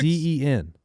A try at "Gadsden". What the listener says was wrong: Gadsden. Yeah, I feel like when you said it, you threw a T in there. Like you hit the first D and the second D was a T. Gadsden. It's Gadsden.